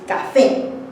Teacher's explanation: tienen la última sílaba más fuerte y más alta. Por eso el tono debe de ser agudo.